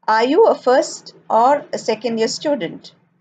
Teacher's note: an alternative question is spoken with the rising intonation in the first part and a falling intonation in the second part